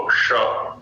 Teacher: और सीधी सपाट आगे करेंगे तो दंत्य दांत के पास जाएगी जीभ। और जीभ को थोड़ी सी हल्की सी गोलाई लेते हुए और जिह्वा के अग्र का ऊपर पीछे थोड़ा सा वहां प्रयत्न होता है